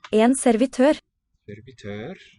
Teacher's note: Sort of rising on the final syllable in this three-syllable word.